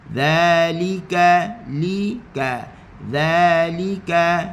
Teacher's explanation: hujung lidah di hujung gigi atas. Dan kita datarkan lidah kita. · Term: ذا